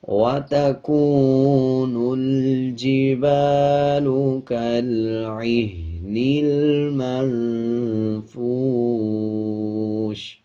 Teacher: جب وقف کریں گے زیر کو سائلنٹ کر دیں گے اور شین کی آواز کو آدھا پڑھیں گے